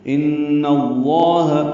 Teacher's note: ان میں نون مشدد پہ غنہ ہے ، اور لام اس میں جرا نون کی زبر کی وجہ